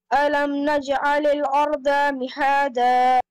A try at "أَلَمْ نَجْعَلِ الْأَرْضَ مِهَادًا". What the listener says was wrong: This is not dal, this is lod.